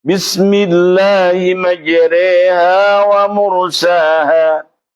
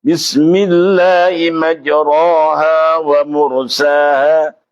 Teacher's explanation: imalah artinya miring, maksudnya cara baca imalah dimiringkan seperti membaca harokat fathah dengan kasrah.